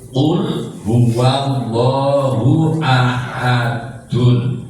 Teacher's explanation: Jadi yang tidak asli mati tapi dimatikan karena wakof itu kolkolah kubro